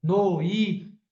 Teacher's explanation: o O som tá descendo e fica fraco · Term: ditongo decrescente